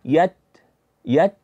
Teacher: ketika kita lepaskan maka muncul akan sifat hams yaitu sifat hams itu dikenal dengan mengalirnya nafas · huruf Ta tadi keluar dari ujung lidah berjumpa dengan pangkal gigi seri bagian atas maka kita tempelkan ujung lidah di Pangkal gigi seri bagian atas · syiddahkah atau yang eh hameskah maka pengucapannya yang pertama adalah dia kita datangkan syiddah dahulu kemudian ketika syiddah selesai baru muncul hamasnya Nah misalkan kan kita bayangkan ini lidah e jadi huruf Ta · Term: ta sukun